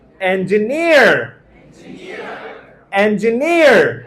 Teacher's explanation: N জি নি আর, নিতে একটা ধাক্কা আছে, স্ট্রেস